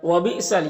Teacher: یہاں پر حمزہ ساکنہ ہے، جھٹکا لگے گا۔